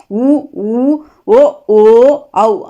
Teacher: உ ஊ ஓ ஓ ஔ ஆகிய 5ம் வாயை திறக்கும் முயற்சியுடன் இதழ்களை குவிப்பதால் பிறக்கின்றன